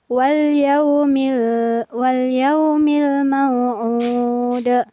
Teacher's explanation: di sini ada pantulan pada huruf dal di ujung ayat